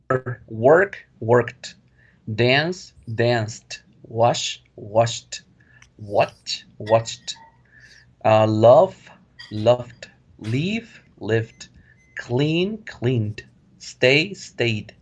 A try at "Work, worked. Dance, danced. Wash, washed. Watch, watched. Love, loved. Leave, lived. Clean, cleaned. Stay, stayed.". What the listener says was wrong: Good job.